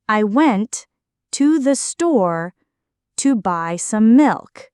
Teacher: The stressed words went, store, buy, and milk carry the main meaning. The unstressed words I, to the, to, some connect the ideas. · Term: Sentence stress and rhythm